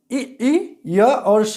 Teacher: तो च वर्ग, इ, य और स ये ताल से बोले जाते हैं, तालव्य से। मतलब ये ऊपर का स्थान होता है, मुख का ऊपर का स्थान, जो तालु जिसको कहते हैं हम, ठीक, वो उच्चारण स्थान है।